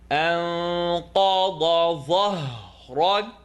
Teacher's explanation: It's the letter qaf, dad on the sides, dha, second part of the tongue at the edge of the top teeth. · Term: heavy letters